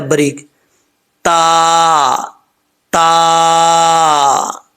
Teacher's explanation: تا کا مخرج، زبان کی نوک اوپر والے دانتوں کی جڑوں سے لگے